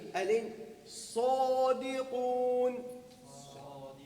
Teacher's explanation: طرف اللسان مع ما فوق الثنايا السفلى